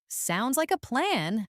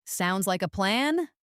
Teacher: So, the confident downward tone is standard.